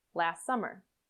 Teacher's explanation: friends listen once more last summer there are two possibilities here the t can disappear completely so that you link the s in last and the first s of summer together